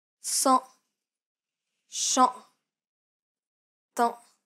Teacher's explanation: This is identical to the previous sound, except that there's nasality. Try saying the A in father while pronouncing it through your nose.